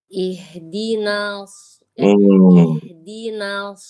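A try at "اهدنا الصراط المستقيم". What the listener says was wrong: Karena Ibu itu fokus ke huruf sod. Sehingga huruf na yang tipis ditarik sama sod ke bawah tebal. Caranya pangkal lidahnya Ibu jangan langsung naik. Kan huruf sod itu kan pangkal lidahnya naik ya kan? Huruf na belum selesai pangkal lidah pantang naik. Biarkan na baca biasa dulu. Lalu yang kedua, Ibu jangan buka no, enggak. Tapi na, begitu.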